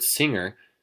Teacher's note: In English, when we pronounce the word singer, we don't actually pronounce the g sound at all